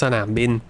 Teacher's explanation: I'm pretty sure it's a rising nam because the สอเสือ is affecting the นอหนู